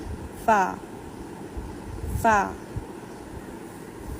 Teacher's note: ہمارے جو دانت ہے، ہمارے جو ہونٹ کا جو اوپری حصہ ہوتا ہے وہاں پہ ٹچ ہوتے ہیں تو فا ادا ہوتا ہے